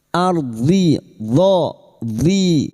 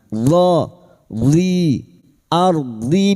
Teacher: huruf dhad tepi lidah nempel pada gigi geraham atas, boleh kiri boleh kanan.